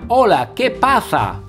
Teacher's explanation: A diferencia del seseo, que pronuncia solamente el sonido s y no el sonido th, el ceceo sustituye todas las s con el sonido th